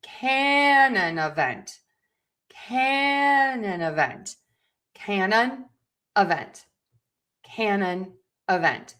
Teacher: we are going to stress syllable number one can. And we are going to stress syllable number four vent. So it's going to be canon event.